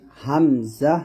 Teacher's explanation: তাহলে হামজার উচ্চারণটা হচ্ছে আমরা গলার শুরু থেকে বলি হামজা এরকম আর আইনের উচ্চারণটা করি হচ্ছে গলার মাঝখান থেকে কণ্ঠনের